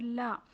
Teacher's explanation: لام زبان کے کنارے کو سائڈ کے دانتوں کو لگانے سے عطا ہوتا ہے اور لام کو ہم باریک پڑھیں گے، لام زبر لا۔